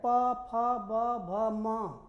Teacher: ओठ क्या हो रहा है? एक दूसरे से सट रहा है। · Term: ओष्ठ